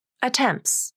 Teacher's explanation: There's no final T in attempts.